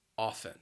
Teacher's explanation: you're not going to hear that T. It is a silent letter, a silent T